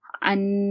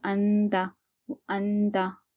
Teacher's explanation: ایک الف کے برابر ہم ناک میں آواز لے کے گئے اور چھپا کر پڑھیں گے